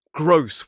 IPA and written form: ɡrəʊs (gross)